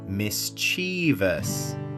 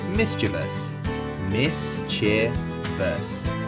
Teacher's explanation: Mis-chee-vee-us. The stress is on the first syllable, miss. The middle is just a quick che.